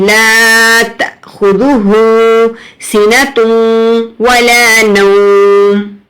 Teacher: دیکھیں تا کے بعد حمزہ ہے، حمزہ کے اوپر جزم ہے، تو جزم تھوڑا سا جھٹکا دے کر پڑھیں گے